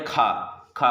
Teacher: खा महाप्राण, अधिक ऊष्मा निकलती है